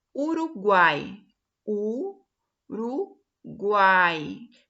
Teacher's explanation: o som mais intenso é o A, por isso que ele é a vogal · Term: tritongo